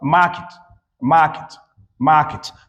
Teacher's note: being in an unstressed position weakening the eh sound, and produces the short i sound.